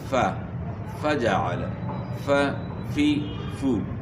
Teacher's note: اب مثال کے طور پہ فَجَعَلَ فَجَعَلَ، آپ محسوس کر رہے ہیں کہ فا کو ہم نے جو ہے کمزور آواز کے ساتھ پڑھا، تو سانس بھی جاری ہے اور آواز میں بھی پستی ہے۔ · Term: صفت ہمس